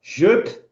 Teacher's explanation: Você sopra o P para fora. Jup. Aí o sopro é o que você coloca atrás do P para poder falar assim, ó.